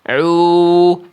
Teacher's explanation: Suara teman-teman itu berdengung masuk ke rongga hidung. Seharusnya ain itu suaranya masuk bukan ke rongga hidung, dari tengah tenggorokan jalurnya masuk ke rongga mulut.